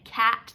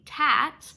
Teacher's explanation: So if their error, which is quite common with children, is to turn K's into T's, instead of saying cat, they say tat, I would tell them like, oh, your tongue is going up in the front of your mouth and it needs to go up in the back of your mouth